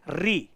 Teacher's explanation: री, हम री का उच्चारण करेंगे, देखा आप, प्राणवायु निकल करके और जीभ का सहारा लेकर के हमारी जो मूर्धा है वहां पर टकराएगी, री। तो री को हम मूर्धन्य स्वर कहते हैं।